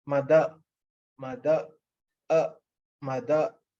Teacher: The last sound is actually schwa. It's very, very meek.